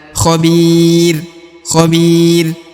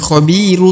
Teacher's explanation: ketika wakaf maka huruf rnya berubah menjadi ro sukun tidak dibaca ru tapi khobir khobir ya bukan khobiru tapi khobir